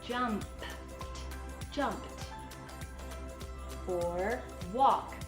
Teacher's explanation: Okay, so if it ends with an unvoiced sound, like a p, like jumped, or walked. So walk ends with k, so the ed is gonna say t.